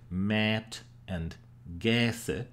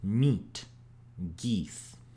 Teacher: the words that used to be pronounced with an a like mat and gase now were pronounced with e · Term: great vowel shift